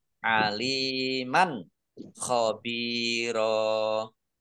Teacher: Fathah tanwin bertemu dengan huruf kha, bacaan izhar, dibaca jelas